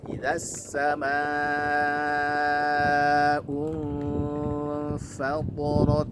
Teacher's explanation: Nah, perhatikan ikhfa-nya. Karena nun sukun bertemu dengan fa yang merupakan huruf tipis ya, maka ikhfa-nya juga tipis ya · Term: ikhfa hakiki